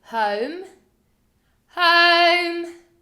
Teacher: you stretch out the o and you finish it off with the m at the end